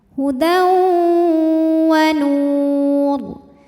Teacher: Kemudian ada hukum idgham bi gunnah karena ada tanwin fathah menghadapi huruf waw, maka tanwin masuk ke waw, hudaw disertai dengung.